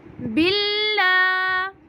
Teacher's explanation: اللہ کے نام کو ہم باریک پڑھیں گے